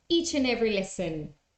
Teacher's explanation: an English person would not stop at the end of these words yeah look at this we have a consonant sound vowel so